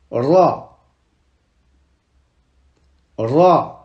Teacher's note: Ici, on roule le R.